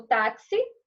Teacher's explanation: paroxítona eu tenho a penúltima sílaba